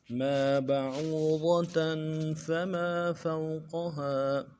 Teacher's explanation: میم کے بعد الف مدہ ہے، ایک الف دار میں کھینچیں گے